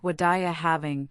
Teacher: What are you having likely sounded like wadaya having, with the T in what blending into the R. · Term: connected speech